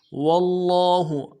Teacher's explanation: بما قدمت ایدیہم ولن یتمنوہ ابدا بما قدمت ایدیہم واللہ میں واو کو لام کے ساتھ ملانا ہے، لام کے اوپر تشدید زور دیں گے، اگلے لام کے اوپر کھڑا زبر ہے، ایک الف دال میں کھینچیں گے